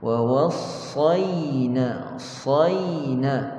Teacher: Sad kita tebal, bila masuk kepada ya, pastikan kita nipiskan ya.